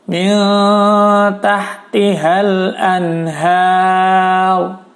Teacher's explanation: Nun sukun bertemu ha, hukumnya adalah izhar ya, jadi dibaca jelas.